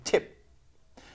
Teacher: The p sound, when it is actually final, it loses that explosive effect. You don't say tip, you say tip. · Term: unreleased